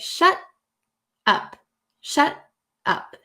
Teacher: So there's like a breath in between and no T is pronounced.